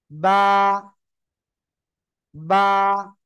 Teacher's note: দুই ঠোঁটের ভিজা অংশ থেকে